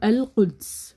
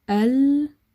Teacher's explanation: But because you're completely closing your throat, you cannot push a sound out. So as you're releasing your tongue for the qaf, you push some sound out, and that is the letter qaf.